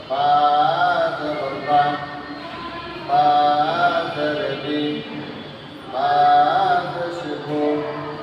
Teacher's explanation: তারপর হচ্ছে বা, দুই ঠোঁটের মাঝখান থেকে মোটে ঠোঁট লাগিয়ে ঠোঁট মিলিয়ে উচ্চারণ করতে হবে।